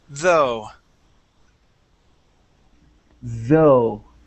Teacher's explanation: in the word though, this is going to be a voiced th. You had said though, pronouncing an unvoiced th.